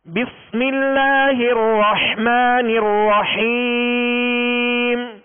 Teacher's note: جب اس کی حرکت پڑھیں گے تو آپ ایک الف کی مقدار میں کھینچیں گے، جب وقف کریں گے تو آپ سکون عارض پیدا ہو گیا، لہذا اب مد عارض ہوگی، اس کو ایک الف سے زائد اب کھینچ سکتے ہیں